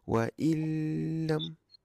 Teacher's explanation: Okey lagi sekali khadij yang ni idram bila ghunnah tak boleh wail jangan dengung waillam waillam idgham bila ghunnah masuk tanpa dengung